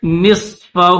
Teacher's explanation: نون کے بعد صاد ہے، صاد کو موٹا کریں گے، یہ حروف مستعلیہ میں سے ہے ، جو حروف مستعلیہ میں سے ہوں تو ان کو موٹا